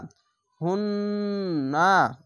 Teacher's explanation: পড়তে হয় হা নুন পেশ হুন নুন জবার না হুন্না এখানে ওয়াজিব গুন্না তাজিদ অক্ষরটি দুবার উচ্চারণ হবে হা মিলবে নুনের সাথে হুন আবার নুন জবার না হুন্না সাকিন